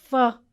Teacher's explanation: When you say f, the upper front teeth is touching your lower lip.